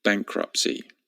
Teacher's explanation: there's a silent T in there at the end